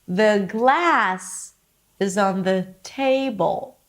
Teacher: So notice that I raised the pitch for glass and table.